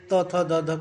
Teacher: इसका जो उच्चारण स्थान होगा त, थ, द, ध का दंत होगा